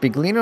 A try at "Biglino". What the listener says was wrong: I'm heard it's pronounced Biino. Like you just ignore the L and the G.